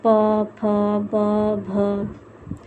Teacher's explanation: इसके उच्चारण में दोनों ओठ जो होते हैं कि परस्पर सटते हैं, प बोलते हैं। प वर्ग में जितने भी वर्ण हैं उसके उच्चारण में दोनों ओष्ठ परस्पर चिपकते हैं आपस में